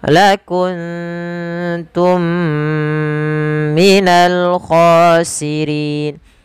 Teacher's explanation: mim mati bertemu mim lagi, kita hukumi dengan idgham mimi. Cara membacanya ditahan suara nya sepanjang 2 harakat.